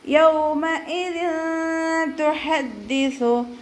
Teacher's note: തെൻവീനിന് ശേഷം താ വന്നു, ഇഖ്ഫാൻ്റെ ലെറ്റർ ആയിട്ടുള്ള താ വന്നതുകൊണ്ട് നമ്മൾ തെൻവീനിലുള്ള നൂനിനെ മറച്ച് വെച്ചിട്ട് മണിച്ചോതി കൊടുക്കുക